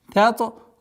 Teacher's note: с мягкого на твердое произношение та с правилом калькаля, применяем правило калькаля.